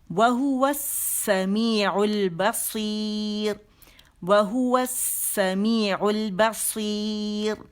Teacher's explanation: سیر باریک ہو جائے گا